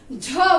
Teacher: जो ऊर्जा है उसका ज्यादा इस्तेमाल हो रहा है, इसलिए ये किस में आएगा, महाप्राण में आएगा, महाप्राण व्यंजन में आएगा।